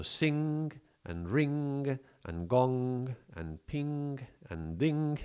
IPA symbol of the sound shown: ŋ